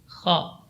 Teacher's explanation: huruf kha ini keluar dari ujung tenggorokan, min adna al-halqi, yaitu ujung tenggorokan.